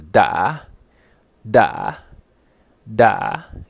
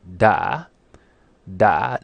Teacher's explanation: it's a rising broken tone with a glal stop da da now what does it mean